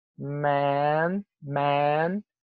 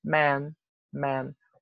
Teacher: E a diferença seria essa. Vocês têm um man, que é bem aberto, bem para baixo.